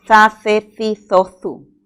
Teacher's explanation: Es un sonido fricativo interdental.